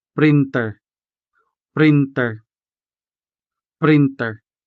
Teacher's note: the consonant ta in Hiligaynon is always sounded